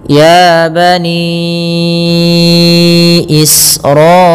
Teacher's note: alirkan nafas ketika melafalkan sin karena sin punya sifat hamz